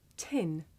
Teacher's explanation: notice how the puff of air at the beginning of tin makes the paper move